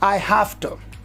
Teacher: it becomes f because of the following voiceless t, and we say I have to.